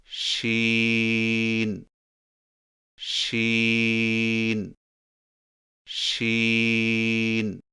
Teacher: زبان کے درمیان کو تالو کی طرف بلند کرتے ہوئے باریک اور پھیلتی ہوئی آواز میں پڑھیں، یعنی شین شین شین۔